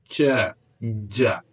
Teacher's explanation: The blade of tongue touches the palate and completely blocks the airstream. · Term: affricates